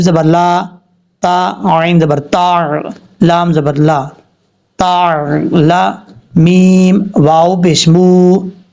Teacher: اگر واو ساکن سے پہلے زبر ہو تو واو لین ہوگا, اگر واو ساکن سے پہلے پیش ہوگا تو واو مدہ ہوگا. یہاں پر واو ساکن سے پہلے پیش ہے, ایک الف کی مقدار لمبا کر کے پڑھیں گے